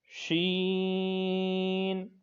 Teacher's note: اگلا حرف ہے شین، جیسا کہ آپ نے اوپر جیم پڑھا تھا، یہ حروف شجریہ کا حرف ہے، تو اس کی جو اردو بنتی ہے وہ زبان کے درمیان اور تعلق کے درمیان سے، تو اسی طرح جو شین کا حرف ہے یہ بھی حروف شجریہ کا ہے اور یہ زبان کے درمیان اور تعلق کے درمیان سے ادا ہوتا ہے